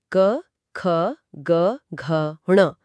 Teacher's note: सबसे पहले आती हैं कंठी ध्वनियां क, ख, ग, घ, ण। इनका उच्चारण सीधे कंठ यानी गले से होता है। आवाज बिल्कुल गहराई से उठती है।